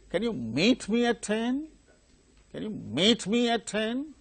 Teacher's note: Can you meet me at 10? That's rising tone. The tonic syllable is meet.